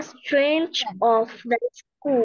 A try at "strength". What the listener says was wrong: Strength. এখানে জিটা ওইভাবে উচ্চারণ হবে না, কি হবে উচ্চারণ? Strength.